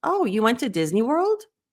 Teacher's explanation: you have to do it with a question inflection what we call an uptick